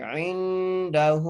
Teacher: عین کو نون سے ملاتے ہوئے غنہ کریں گے